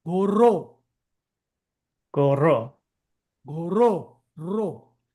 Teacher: You are vibrating your tongue up near the upper pallet. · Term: rolling R